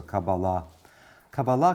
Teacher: I prefer putting the accent on the last syllable which is how modern Hebrews usually treats words so Kabbalah Kabbalah